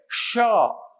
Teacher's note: यह तालव्य व्यंजन है इन्हें हम तालु की मदद से बोलते हैं · शक्कर वाला एस बोलने के लिए जीव तालु की तरफ जाति है · च बोलने के लिए जीभ उठकर तालु की तरफ जाती है, च। वैसी शक्कर वाला स बोलने के लिए जीभ तालु की तरफ जाती है, श। इसलिए जब विसर्ग संधि होता है तो संधि में यदि च भाग ले या छतरी वाला छ भाग ले तो शक्कर का स बनता है।